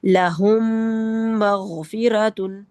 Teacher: इन दोनों का इदगाम हो जाएगा और यह एक मीम मुशद्द की तरह अदा होगा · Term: इदगाम शफवी